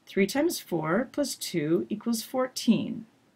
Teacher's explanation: last thing we looked at was thought groups this idea that in English you have to break up your ideas by taking a pause but you don't bring your voice down until the very end of the sentence · In the middle, it's important to take breaks, but don't drop your voice down until the end.